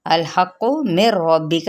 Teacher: ادغام بلا غنہ، کیونکہ نون ساکن کے بعد را آ رہا ہے